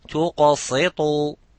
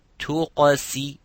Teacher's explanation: there are two mufakham letters. For example, the qaf and the ta. Both of them are mufakham, both of them are heavy letter, and the sin is in between. So instead of saying tuqasitu, so watch, tuqasi.